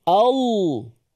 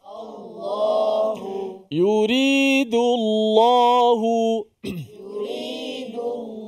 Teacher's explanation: Sedangkan lam tu tak ada bibir. Lam tu adalah daripada lidah semata-mata.